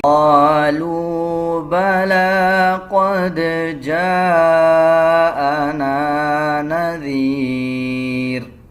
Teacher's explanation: دال کے اوپر جزم ہے قلقلہ کیا جائے گا